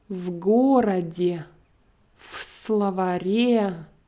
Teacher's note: Notice how I combine my preposition to my word, pronouncing as if it's just one word.